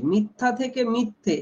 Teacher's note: এখানে সেটা হয়েছে ই আর এ। লক্ষ্য করে দেখো ই একদম উচ্চ। আর আ হচ্ছে নিম্ন। তহলে এই দুটোর এতটা পথ জীবকে অতিক্রম করতে হয়।